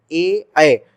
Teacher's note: कंठ से तो आवाज निकल रही है, जीभ चौड़ा होकर तालु से भी टच हो रहा है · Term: कंठ तालव्य